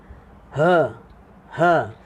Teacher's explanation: Huruf ha, dia halkum yang paling bawah, tingkat paling bawah. Halkum kita kat tekak tu, dia yang paling bawah.